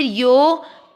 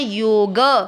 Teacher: यो दीर्घ करना है ग में अ मिक्स करना है